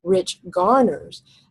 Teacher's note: That's called a spondee, where both syllables are accented.